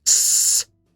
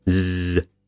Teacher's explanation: So voicing means that your vocal folds vibrate when you make the sound. So an s is unvoiced, but a z is voiced. You can easily check this yourself by putting your fingertips on your voice box, and if it moves while you're speaking, then the sounds you are making are voiced.